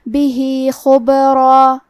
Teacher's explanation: کلمت بھی کے آخری میں ہا کے نیچے کھڑی زیر ہے، یہاں حکم ہے مد صلہ صغرا، تو ہم اپنی آواز دو مد کے برابر لمبی کریں گے